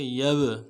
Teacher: با جب ساکن ہو تو قلقلہ میں سے قلقلہ کریں گے